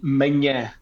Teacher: the second one is more from the nose, and it gets the tilde, and it means morning.